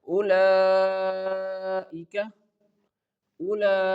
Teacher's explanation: there is a mad, but its size is small, so we can stretch this word only for four counts